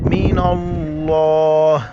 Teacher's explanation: वसीयतम, मीम के ऊपर शद है तो यहाँ पर जो है ना हम गुन्ना करेंगे, वाज और व, स्वाद या सी, वसी, त मीम दो ज़बर तम, वसीयतम मिनल्लाह। लफ्ज़ अल्लाह से पहले नून के ऊपर ज़बर, लफ्ज़ अल्लाह को मोटा करके पढ़ेंगे, मिनल्लाह, आखिर में सिर्फ आ का साउंड आएगा।